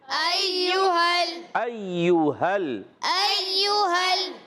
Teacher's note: یا مشدد رکھنا ہے، مگر اس میں جا جیسی جا آواز نہیں ہے